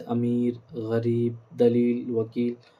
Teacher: یائے معروف پڑھیں گے، وہ یا ہے جو کھینچ کر پڑھی جائے، بس معروف وہ بھی جتنے بھی چیز ہوگی تھوڑا کھینچ کر پڑھیں گے، یعنی پر کر کے، تاکہ لگے کہ وہ ظاہر، مطلب اس کی پوری ادائیگی ہو، جیسے امیر، غریب، دلیل، وکیل وغیرہ۔